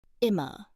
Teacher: In immer, the I is short and quick, just like the I in bit.